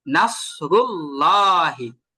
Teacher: লামটাকে ল করে পড়তে হবে। মোটা করে পড়তে হবে। যেমন নাসরুল্লাহি এটা মূলত আল্লাহ শব্দ। · যখন আল্লাহ শব্দের লামের আগে যখন জবর বা পেশ থাকবে তখন, হ্যাঁ, তখন লামটাকে ল করে পড়তে হবে, মোটা করে পড়তে হবে